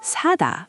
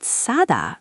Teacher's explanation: Regular s is a soft s sound, but s is sharper and tenser. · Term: double s